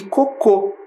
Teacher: Tem a penúltima sílaba tônica e a palavra cocô é oxítona, tem a última sílaba tônica